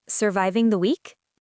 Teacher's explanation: Because it's a question, your voice needs to naturally rise at the very end, but it should not sound like a serious medical inquiry.